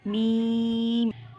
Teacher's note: इसको 3 अलिफ के बराबर लंबा करेंगे, मी को, और आखिर में फ़ौरन से मीम पढ़ लेंगे